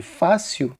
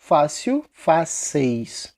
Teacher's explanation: vai ficar com eis, só que fechado, e fechado.